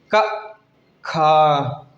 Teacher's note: खा जैसे ही बोलते हैं तो ज्यादा वायु निकलती है का के स्थान से तो यह महाप्राण हो गया ग घ